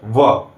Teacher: जब भी आप व का उच्चारण करते हैं तो आपके ऊपर के दांत निचले होठों को टच करते हैं, स्पर्श करते हैं, दोनों जुड़ते हैं।